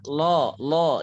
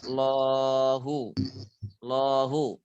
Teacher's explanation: lafadz Allah itu lemnya dibaca tebal ya